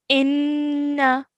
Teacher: Whenever we see a noon mushaddad, we have to spend 2 seconds on the nasal sound or the ghunna sound.